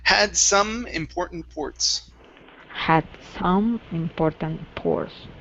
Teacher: First up, we have the word some. Okay, now instead of saying sun with an N, give me an M sound. So, had some important ports.